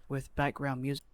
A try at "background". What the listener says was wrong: Background. Background. I'm not quite hearing background. There's too much of that. I guess that pause, right? I'm kind of hearing background instead of like background. Or maybe it's not a pause. It's just the first syllable is, I guess, too heavily emphasized.